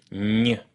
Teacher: the middle of your tongue doesn't just move towards the roof of your mouth, it actually touches it, stopping the airflow and forcing the air to come out of your nose